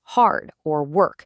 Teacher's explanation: When you pronounce the R in words like hard or work, you're actually preserving a phonetic feature that upper class British speakers eventually abandoned. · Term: roticity